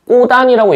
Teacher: 그래서 얘를 뒷말의 첫 소리가 무어로 시작하는, 모음으로 시작하는 경우에 앞말의 받침인 디귿 자음과 뒷말의 첫 소리인 모음이 합쳐지게 되면 그대로 올라갑니다. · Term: 연음 법칙